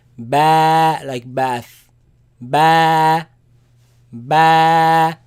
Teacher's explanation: the sound is b, comes from the lips. B. It is elongated, it is stretched because of the alif following it.